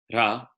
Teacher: the consonant R is tapped, ra, in Sanskrit and not in English. Okay, so they're slightly more dissimilar in Sanskrit.